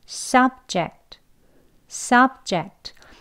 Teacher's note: Sub를 강하게 길게 높게 발음하시고요. 뒤는 약하게 해주시면 돼요. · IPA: /ˈsʌb.dʒekt, -dʒɪkt/